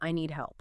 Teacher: the D is often very light, or, more likely, almost completely swallowed because it comes before another consonant, the H in help. The difference is, here the D is kind of blocked by the following consonant. · stopping the D sound entirely in their throat, no final puff of air, and then immediately starting the H sound. So no need-D-U-H help. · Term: swallowed D